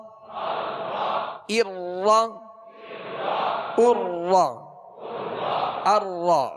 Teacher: را کو اس کے مخرج سے ادا کریں گے تو را میں کپ کپاہٹ سی ہوگی, کپ کپی پیدا ہوگی, جسے کہتے ہیں تکرار.